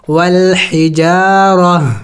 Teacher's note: وقف میں اس گول تا کو ہا سے بدلانا ہوگا اور ساکن کریں گے۔ وقف والحجارہ، اس گول تا کو ہا سے میں نے بدلایا، والحجارہ۔